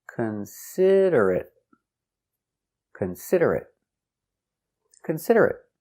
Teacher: Four syllables. The stress is on the second syllable.